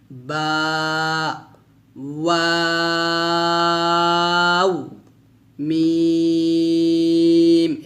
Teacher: বাটা আমরা দুই ঠোঁট মিলে উচ্চারণ করব, আর ওয়াওটা আমরা দুই ঠোঁট গোল করে উচ্চারণ করব, আর মিমটা দুই ঠোঁটের শুকনো অংশ থেকে আমরা মিল করে উচ্চারণ করব।